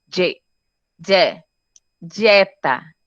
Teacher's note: Porque o D está junto de uma semivogal e uma vogal. Então, essas duas passou a ter um som só.